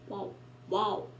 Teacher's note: the pronunciation of W is lips rounding, like vowel